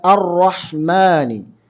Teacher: റാ ഉച്ചരിക്കുന്ന സമയത്ത് നാവിൻറെ മധ്യത്തിൽ ഒരു ഫജ്വ അഥവാ ഒരു വിടവ് ഉണ്ടായിരിക്കുന്നതാണ് ആ രീതിയിലാണ് ഉച്ചരിക്കേണ്ടത് അത് അതിന്റെ സിഫത്തുമായി ബന്ധപ്പെട്ട് പഠിക്കുമ്പോൾ ഒക്കെ അത് കൂടുതലായി